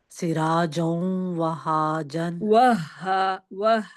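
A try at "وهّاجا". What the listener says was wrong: ہا پہ شد ہے نا، ایک دفعہ ہا پھر ہا وہاجن.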